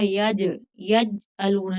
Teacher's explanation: جیم حروف قلقلہ ہے اور ساکن ہے تو یہاں قلقلہ ہوگا. یج، یج علون نہیں پڑھیں گے.